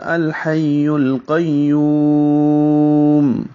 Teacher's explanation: یو میں واو مدہ ہے اور آگے میم ساکن کر رہے ہیں، وقف کر رہے ہیں، تو یہ لمبا ہو جائے گا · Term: مد عارض للسکون